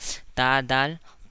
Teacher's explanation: दांतों जबान का नोक ऊपर नीचे के दांतों से जबान जबान के नोक ऊपर के दांतों की जड़ से मिलकर ता दाल तौ अदा होता है